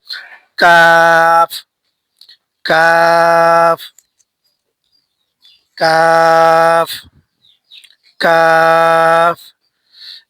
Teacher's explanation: জিহ্বার গুড়া থেকে একটু আগে বাড়িয়ে তার বরাবর উপরের তালুর সঙ্গে লাগিয়ে উচ্চারিত হয় কাফ